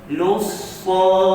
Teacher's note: Lussa, terus masuk pada sad. Lam tidak dibaca, maka hukumnya adalah idgham asy-syamsi.